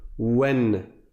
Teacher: Ensuite, alors là on a mis un tanwin, j'espère que vous avez révisé. Le tanwin, ça consiste à prononcer la voyelle courte, ici en l'occurrence la fatha, donc le e, suivi d'un noun avec un soukoun. Sauf que le noun avec le soukoun, on ne le prononce pas, sauf que le noun avec le soukoun, on ne l'écrit pas.